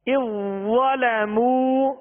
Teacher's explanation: زال کو وا میں داخل کر دیں گے اور نرم پڑھیں گے